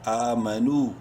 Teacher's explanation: کی وجہ سے میم زبر ما نون واو پیش نو اور ایک الف کے برابر ہی لمبا کریں گے نون کو بھی واو مدہ کی وجہ سے الف سائلنٹ ہے اینڈ میں آمنو میم زبر ما عین زبر